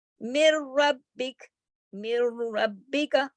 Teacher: ہم نے سختی سے میم کو را کے ساتھ جوڑ دیا، نون کو بیچ میں سے نہیں بولا ہی نہیں، نون کی آواز غائب ہو گئی. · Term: ادغام